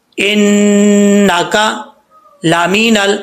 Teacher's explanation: نون کے بعد جو لام ہے اس لام میں بھی قلقلہ نہیں ہے، ٹھیک ہے، لام میں قلقلہ نہیں ہوتا، اس چیز کا خیال رکھنا ہے۔